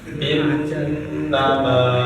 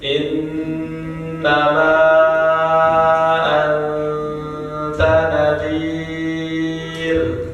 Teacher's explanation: ada nun yang dia ada tasdidnya atasnya, nah itu ditahan